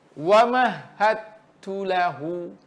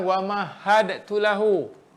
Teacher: masukkan bunyi dal ni kepada bunyi ta. Secara idgham kamil.